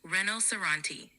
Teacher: emphasis is usually on the third syllable